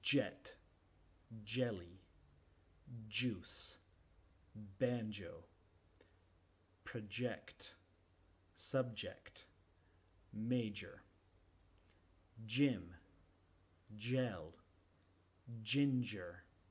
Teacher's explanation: Es igual que cha, ch, ch, solo que dejamos vibrar las cuerdas vocales y se vuelve sonoro. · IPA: [ʤ]